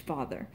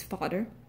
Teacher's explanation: the voiced th my favorite sound which becomes a D becomes a D sound